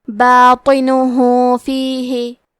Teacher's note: ہا پہ الٹا پیش ہے، یہاں حکم ہے مد صلہ صغرا، تو ہم اپنی آواز 2 مد کے برابر لمبی کریں گے